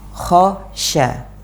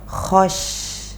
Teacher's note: Untuk huruf kha lafadznya o ketika dia fathah